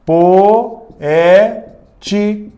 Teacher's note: eu tenho duas vogais em sílabas diferentes então eu tenho um iato